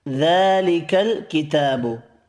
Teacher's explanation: ذا تا 2 کھڑی زبر ہیں، دونوں کو 1 الف کی مقدار میں کھینچ کر پڑھنا ہے